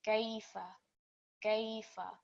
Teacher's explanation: we have an example of a ya lean. So it's quite a soft and blended sound. So we prolong that for 2 seconds. So in total it will be gaifa, gaifa.